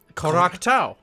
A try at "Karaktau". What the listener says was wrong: Oh, that was a little too fast. I needed more emphasis on the co part. It sounded like crotch. Which sounded like crotch. Or cock. Or cocktail.